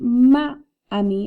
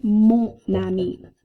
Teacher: And what the liaison does, we've seen this before, where that last consonant that's silent in mon travels over to start the word ami